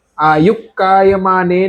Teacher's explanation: ક પણ કંઠમાં બેઠેલો છે અને વિસર્ગ પણ કંઠમાં બેઠેલો છે તો આ બે વચ્ચે ક્લેસીસ થાય એટલે વિસર્ગ છે ને પૂરે